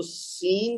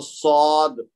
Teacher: سین جو ہے وہ حروف مستعلیہ میں نہیں ہے اس کی باریک آواز ہوگی تو صاد یہ موٹی آواز ہے